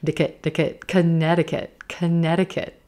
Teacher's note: There's a flap T in there.